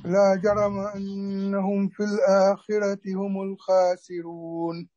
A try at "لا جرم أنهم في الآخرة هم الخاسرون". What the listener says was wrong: طيب نفخم الراء في الآخرة، راء.